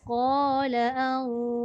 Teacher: Za balik bawah ni dia kena tebal. Ra tu kena nipis.